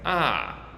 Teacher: But if I'm just speaking how I might normally speak, I might just say ah. Lastly, our fourth tone starts high and then goes low, and so it sounds like ah.